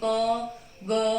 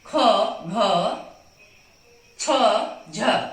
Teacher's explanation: जब हम ख और घ को बोलेंगे तो हमारी एनर्जी, हमारी श्वास वायु ज्यादा बाहर निकलेगी, हमारी एनर्जी ज्यादा लगेगी। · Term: महाप्राण